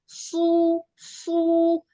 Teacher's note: एक तो सीटी की आवाज आनी है इसमें दूसरा ये मोटा पड़ा जाएगा यानी कि पुर मुंह करके इसमें जुबान के जो पीछे वाला हिस्सा है ना वो भी उठ जाता है सु ठीक है और अगर आप सीन से कहेंगे तो वो सु निकलेगा।